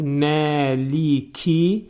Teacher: Məliki yumiddin kəlməsini dedikdə mim hərfindən sonra təbii mədli əlif hərfi gəlir